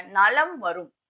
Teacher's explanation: அப்போ வகரத்திற்கு முன் உள்ள மகரம். வகரத்திற்கு முன் உள்ள மகரமானது தன்னுடைய மாத்திரை அளவிலிருந்து குறைந்து ஒலிக்கும். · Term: மகர குறுக்கம்